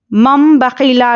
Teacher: नून को मीम से बदलकर इख्फा और गुन्ने के साथ पढ़ना है। तनवीन या नून साकिन के बाद बा आए तो नून को मीम से बदलकर गुन्ने और इख्फा के साथ पढ़ेंगे। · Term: इखलाब